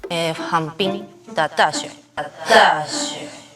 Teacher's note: Not opening the mouth wide enough for the Mandarin ah sound